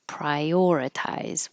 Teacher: Your tongue rises for the I, and now you slide it down and make it prior. If you don't, it'll sound a little choppy.